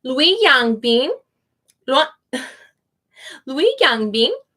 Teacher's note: you almost don't hear the G on these sometimes